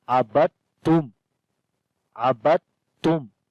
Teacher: دال نہیں پڑھیں گے، با کو ڈائریکٹ تا کے ساتھ ملائیں گے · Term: ادغام متجانسین